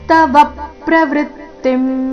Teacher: ತವ ನಲ್ಲಿ ವ ಮೇಲೆ ಆಘಾತ